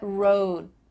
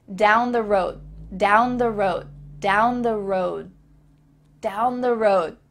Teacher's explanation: Not road, but road. Your tongue is there in place, about to make the D sound, but there's no vibration and air that comes out.